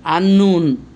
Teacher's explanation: আলিফ লাম লেগে গেল কিন্তু লামের কোনো উচ্চারণ হলো না। আন্নুন, নুনের উচ্চারণ হচ্ছে আন্নুন। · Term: আশ-শামসিয়া